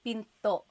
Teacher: Do you hear the glottal stop when I say pinto? Pinto. So it's not pinto.